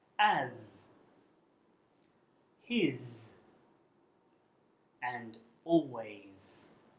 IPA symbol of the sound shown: z